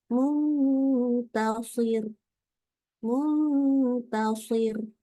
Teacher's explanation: karena waqaf maka dibaca tetap shadnya tebal rnya tipis jadi Muntasir Muntasir jadi rnya tetap tipis ini harus hati-hati ya